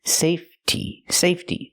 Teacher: So when I change it to the word safety, the E stays silent, and we use a real T sound